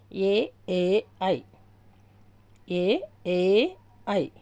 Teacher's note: కంఠ తాతాలవ్యాలు అంటే కంఠం మరియు దవడల నుండి పుట్టినవి